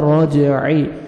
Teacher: را کی عمر فتح ہے, را کو موٹا کرنا ہے, اور جیم پہ قلقلہ ڈبل ساؤنڈ آئے گا راجعی. عین کو اپنے صحیح مخرج سے ادا کرنا ہے تاکہ حمزہ میں ساؤنڈ نہیں جانا چاہیے.